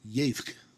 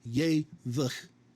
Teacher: This is not ye-vch with a vocal shava. Both of these shavas are silent. This is one syllable, yevk.